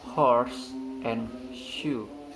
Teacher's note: The S sound of horse might be completely assimilated to the following sound shoe. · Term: full assimilation